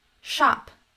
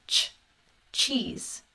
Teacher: we have an unvoiced sh right shop and a voiced ch ch cheese